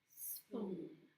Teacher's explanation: The rounding of the lips, they were puckered out, I guess you could say, and they were rounded, I guess to say the ooh sound and spoon.